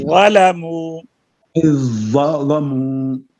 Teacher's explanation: لام کو باریک کریں، وا کو پر کرتے کرتے لام نہ پر ہو جائے